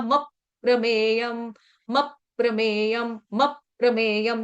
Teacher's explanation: तो क्या आएगा, आघात लगाएंगे म के ऊपर आधे म का, तो बनेगा मप प्रमेयम, मप प्रमेयम, मप प्रमेयम।